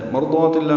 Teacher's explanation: ضا الف مدہ ہے، 2 حرکات لمبا کریں گے